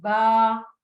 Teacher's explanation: बा होंठों के अंदरूनी गीले हिस्सों को आपस में मिलाकर अदा करते हैं